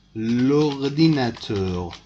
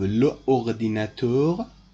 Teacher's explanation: If you put lo before it, two vowels meeting each other, and you must put apostrophe. So instead of le ordinateur, you must say l'ordinateur, because two vowels are meeting each other here.